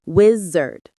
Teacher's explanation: The stress is on the first syllable, whiz.